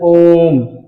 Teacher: हम बोलते हैं ओम। जैसे हम अ बोले अ कम समय लगा आ बोले दो गुना समय लगा ओम बोले तीन गुना समय लगा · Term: प्लुत स्वर